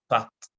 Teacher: la voyelle postérieure ouverte orale arrondie. A, comme dans pas.